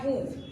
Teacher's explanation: હસ્વ ઉ લખાય ત્યારે એના ઉપર અનુસ્વાર લાગતું હોય છે પણ એનું ઉચ્ચારણ થતું નથી